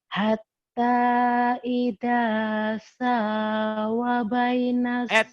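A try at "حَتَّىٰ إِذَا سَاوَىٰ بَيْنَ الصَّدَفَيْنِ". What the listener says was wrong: Wanya panjang, wanya panjang, wanya panjang.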